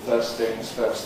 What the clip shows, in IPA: ˈfɜːs θɪŋz ˈfɜːst